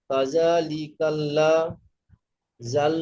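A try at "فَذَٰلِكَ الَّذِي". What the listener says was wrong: জি টান হবে না? ডাল আইন পেশ দুল। দুল কেন ভাই? আইনের উপরে তাসদিদ রয়েছে মানে কি, তাসদিদ ওয়ালা অক্ষরকে দুবার পড়তে হবে, একবার দালের সঙ্গে মিলিয়ে আর একবার লামের সঙ্গে মিলিয়ে।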